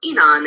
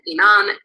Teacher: penultimate high tone is consistently masculine and final high tone is consistently feminine